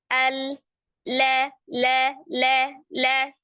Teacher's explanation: tipis ya termasuk dia huruf yang istifal bukan istila ya Jadi huruf yang tipis jadi tidak mengangkat pangkal lidah · lamnya cuman tepi lidahnya ke gusi atas